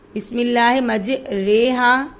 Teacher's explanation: بسم اللہ مجریہا، اس را کو ایسے پڑھیں گے جیسے لفظ قطرے کی را کو پڑھتے ہیں، اس کو امالہ کہتے ہیں، جس کو فارسی والے یائے مجہول کہتے ہیں۔ پس مجریہا کی را کو باریک پڑھیں گے، یعنی امالہ والی را باریک پڑھی جائے گی۔